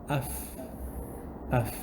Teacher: So it is the top teeth, the front teeth, inside of the bottom lip. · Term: letter fa